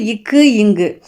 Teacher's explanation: இக்கு இங்கு ஆகிய இரு மெய்களும் நாவின் முதற்பகுதி அன்னத்தின் அடிப்பகுதியை பொருந்துவதால் வந்து பிறக்கின்றன அப்படின்னு நாவோட முதற்பகுதி அன்னத்தின் அடிப்பகுதியை பொருந்துவதால் பிறப்பது இக்கு இங்கு